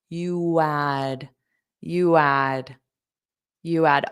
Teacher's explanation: So we have a little bit of a w sound to connect you add